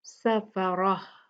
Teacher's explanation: ता मरबूता पे रुकते हैं तो हम इसको हा साकिन में बदलते हैं। सफरा। इसके जो नुक्ते हैं वो भी डिलीट हो जाते हैं, उसके ऊपर जो हरकत होती है वो भी जो है वो गायब कर दी जाती है और हा बना के उसको साकिन पढ़ा जाता है।